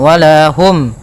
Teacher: mim mati bertemu dengan huruf ya. Maka harus jelas suara mimnya, tidak boleh tahan. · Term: izhar syafawi